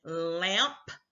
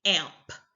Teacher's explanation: they just completely eliminate the L sound from the word altogether